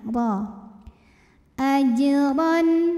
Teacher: kecil ajron kemudian huruf ro dibunyikan secara tafkhim karena r-nya berbaris di atas baris tanwin fathah maka cara membunyikannya adalah dibunyikan dengan menebalkannya pangkal lidah kita naik